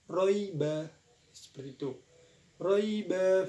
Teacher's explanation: ada huruf lin kembali, cara membacanya yaitu dilunakkan